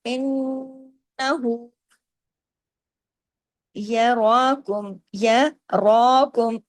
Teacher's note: را کو الف کے برابر کھینچنا بھی ہے